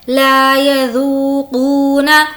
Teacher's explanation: ذو یہاں بھی واو مدہ ہے اور قو میں بھی واو مدہ ہے, کھینچ کر ادا کریں گے